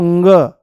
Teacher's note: वायु जो है वो मुंह से नाम मात्र के लिए बाहर निकलेगी पर नाक से ज्यादा निकलने की कोशिश करेगी और जैसे ही नाक से ज्यादा निकलने की कोशिश करेगी तो